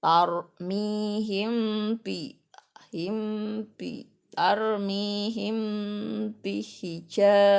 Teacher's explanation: Namanya ikhfa safawi. Jadi dibacanya mimnya kebaca tapi mau ke ba, jadi samar-samar.